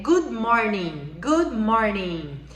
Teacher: Você tem que deixar o D bem sutil, ok?